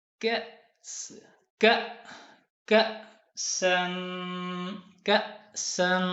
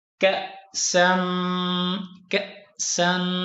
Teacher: یہاں پر حمزہ جھٹکے کے ساتھ پڑھا جائے گا کیونکہ ساکن ہے